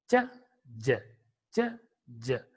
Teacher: Both should be pronounced at the palato-alveolar position only.